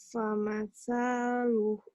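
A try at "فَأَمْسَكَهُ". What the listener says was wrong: Famasaluhu. Gitu. Tekan di ujung.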